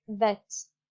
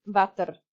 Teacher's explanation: the w sound, water, for instance, is pronounced as v